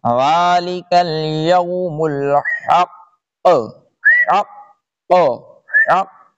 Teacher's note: آگے یہ سمجھ لیں اوپر ذالک الیوم الحق، یہاں پہ جب وقف کریں گے تو یہ جو قاف کے اوپر پیش ہے یہ چلا جائے گا، یہاں پہ بھی قاف کے اوپر پیش چلا جائے گا، تشدید نہیں جائے گی، اور اس قاف میں جماؤ کے ساتھ قلقلہ ہوگا۔